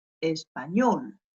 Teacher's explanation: On a appuyé sur la dernière syllabe.